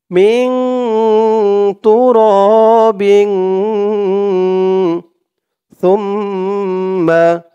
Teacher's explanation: তা আর এখানে তানবিনের পরে ইকফার হরফ সা দুটোটাই ইকফা গুন্নাহ দুটোটাই একরকম গুন্নাহ হবে নাকের ভিতরে লুকিয়ে